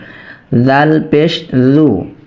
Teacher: জাল পেশু জাল পাতলা হরফ তো যত সম্ভব আমরা পাতলা করবো জাল হরফটি উচ্চারিত হয় জিহ্বার আগা সামনের উপরের দুই দাঁতের আগার সঙ্গে লেগে